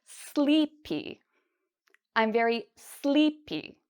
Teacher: The stress is actually on the first part.